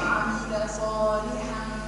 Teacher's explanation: اخفى مع الغنة التنوين